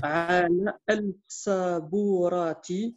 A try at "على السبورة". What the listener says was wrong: Non, il n'y a pas de lam, donc ça fera ala sabourati.